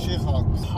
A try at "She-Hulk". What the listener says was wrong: Wait, She-Hawks? You pronounced it wrong. She-Hawks. First was Jelly, now She-Hawks. It's She-Hulk. She-Hulk.